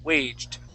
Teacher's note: really what your tongue is doing you're almost pronouncing a t sound at the end